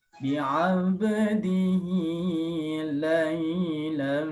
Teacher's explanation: Di sini lam mi idgham adat baris 2 di sini. Menemukan mim, dia harus dimasukkan dan dilamakan. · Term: idgham di gunnah